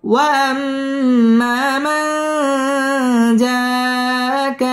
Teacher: মান জাআ মধ্যে মুত্তাসিল চার আলিফ টান দিয়ে পড়তে হবে